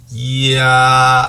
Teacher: 야는 바로 반모음 이와 아가 겹쳐진 발음이다. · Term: 이중모음